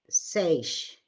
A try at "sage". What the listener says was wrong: Okay, so this G is what's giving you trouble, and that is our American J sound. It's a soft G, which is J. Sage. Sage. So put your tongue up where you would do a D, and do J. J. you, it would be the J sounds that you would want to work on, because I'm hearing that your tongue doesn't want to do the voiced J.